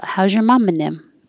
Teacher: getting rid of the th in them sounds like nem